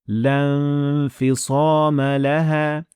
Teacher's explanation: الف کو نہیں پڑھا جاتا، یعنی حمزہ یا الف کو بالکل بھی ادا نہیں کیا جاتا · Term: ہمزت وصل